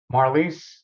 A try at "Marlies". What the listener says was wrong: Well, you are, except the R is silent, so it's Malise.